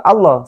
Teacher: sebelumnya ada harakat kasrah maka lafadz Allah lamnya dibaca tipis menjadi la seperti lamnya biasa